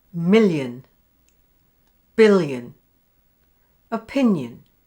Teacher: listen to these word endings spelt with ion, where there is a y sound before the schwa sound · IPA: /jə/